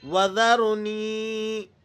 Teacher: را کو آپ نے موٹا کر کے پڑھنا ہے۔ رائے ساکنہ ما قبل مفتوح، اس صورت میں بھی را موٹی پڑھی جاتی ہے۔